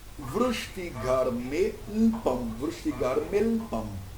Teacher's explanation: on ne dit pas le A au milieu du mot